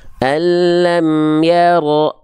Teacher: jadi sifat isti'la inilah yang membuat huruf tebal terdengar seperti O